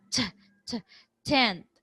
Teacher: in general American English you have to aspirate the initial consonant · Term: aspiration